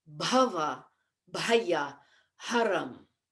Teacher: Bha is what we call a Mahaprana sound. And it is also Ghosha, which means voiced.